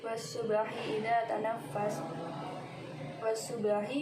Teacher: Ayat ke-18, wasubahi idza tanaffas, wasubahi alif lam bertemu dengan shad, hukum bacaannya alif lam syamsiyah. Subahi dibaca qalqalah karena ba sukun dan dibaca memantul